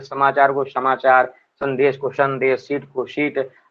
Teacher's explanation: पहाड़ी जिलों में स को श बोल देते हैं